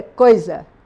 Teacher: O I sai fraquinho.